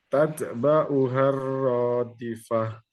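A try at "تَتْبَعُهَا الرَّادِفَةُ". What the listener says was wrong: Iya, Masya Allah.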